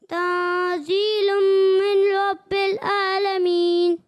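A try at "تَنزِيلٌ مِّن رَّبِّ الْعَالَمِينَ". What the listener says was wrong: اچھی کوشش ہے، لیکن یہاں من رب العالمین نہیں ہے، ٹھیک ہے؟ من رب العالمین. اور دوسری بات یہ کہ عین کی ادائیگی آپ نے غلط کی، حمزہ پڑھا، ٹھیک ہے؟ حمزہ نہیں ہے، یہ عین ہے، ٹھیک ہے؟ عالمین نہیں، عالمین.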